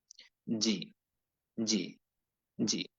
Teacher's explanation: জিহ্বা বরাবর মধ্যখান উপরে তালুর সঙ্গে লাগে না যুক্ত হয় না বাংলার মত করে যদি বলা হয় তাহলে জিহ্বার মধ্যখান থেকে আরেকটু সামনের দিকে আগিয়ে যে অংশটা আছে সেটা উপরের তালুর সঙ্গে লাগে